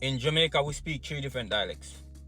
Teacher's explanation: Notice how the TH is almost always dropped.